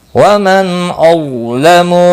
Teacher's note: نون ساکن کے بعد حمزہ آیا ہے، اظہار حلقی ہوگا